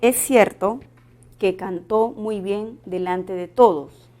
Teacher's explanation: Entonces aquí tenemos un fonema suprasegmental. El tono final de la oración es descendente y podríamos cambiarlo a una pregunta.